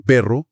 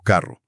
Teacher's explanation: un sonido muy característico del español es la RR vibrante múltiple, como en perro o carro, o la R fuerte al principio de palabra, como en roto.